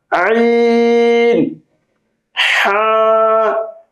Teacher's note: দুই নাম্বার মাখরাজ হলকের মধ্যখান হইতে অথবা কণ্ঠনালীর মাঝখান থেকে উচ্চারিত হয় আইন, হা। গলা ডাবিয়ে, গলার ভিতর হালকা চাপ চাপ খাবে।